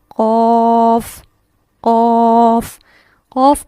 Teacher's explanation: قوف کا مخرج، زبان کی جڑ بالمقابل اوپر کا تالو